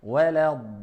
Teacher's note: je ne dis pas wala dalin parce qu'il y a une shidda, donc je la double